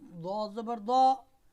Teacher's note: दौद ज़ुबान का बगली किनारा और ऊपर की जो दारें हैं उन पर ज़ुबान लगाने से हरफ दौद अदा होता है। आसान अंदाज में आप इस तरह दौद का मखरज यूँ भी आप याद कर सकते हैं, जान सकते हैं कि आप कोशिश करें कि जो आपकी ज़ुबान है वो जो पहली हंसने वाली दार है ऊपर वाली, वहाँ से लेके पीछे की तरफ ले जाना शुरू कर दें।